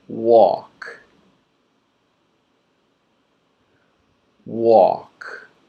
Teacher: This is a silent L. This means we do not pronounce the L. We see it, we don't hear it, we don't say it.